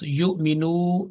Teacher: she did not prolong more than 2 counts